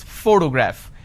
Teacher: When I pronounce this particular word, photograph, the correct pronunciation is photograph, which means I am stressing on this particular syllable, which is the first syllable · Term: word stress